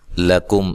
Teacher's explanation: لام کو باریک پڑھنا ہے، کاف کو باریک پڑھنا ہے، یہاں میم ساکن کا اظہار ہے، غنہ نہیں کریں گے